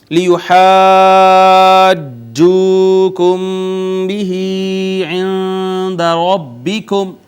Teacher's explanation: میم ساکن کے بعد با آ گئی، اخفاء شفوی